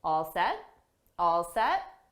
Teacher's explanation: we'll just use two words with a rising intonation to show it's a question